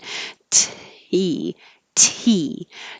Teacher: So, you have to hold the T with a lot of pressure, tongue behind the top teeth, and then release it with a burst of air. So, there should be a delay between when you release that T and when your vowel comes on for E.